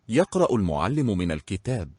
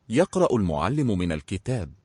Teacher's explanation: Only the hamzat wasl is silent, the lam is not.